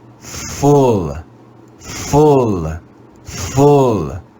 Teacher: the english vowel u can also make a rounded short u sound in memorized words